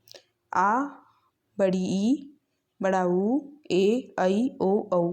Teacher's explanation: इनके उच्चारण में ह्रस्व स्वरों के उच्चारण से दुगुना समय लगता है। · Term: दीर्घ स्वर